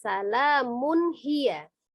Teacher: Salamun tanwin bertemu dengan huruf H yang salah satu huruf Al halqi maka dibaca izhar atau jelas